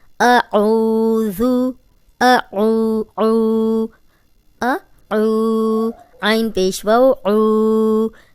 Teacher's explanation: اب جزم والی واو پیچھے عین پہ پیش، اس کو 2 حرکات لمبا کریں گے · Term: واو مدہ